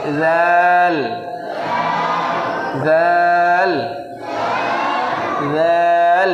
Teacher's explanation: এটা পাতলা হবে, জিভের আগা, উপরের দাঁতের আগা।